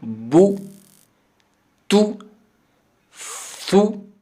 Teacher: اس کا طریقہ یہ ہوتا ہے کہ ہونٹوں کو ملا کے گول کر کے باہر نکالا جائے سامنے، جس سے سامنے والا جو حصہ ہوتا ہے یہ کھلا رہے، اور پیچھے جو بنیادی ہوتا ہے حصہ ان کا یعنی شروع والا یہ آپس میں مل جائے۔ تو اس طرح گول کر کے واو کی طرح پیش بھی ادا کی جاتی ہے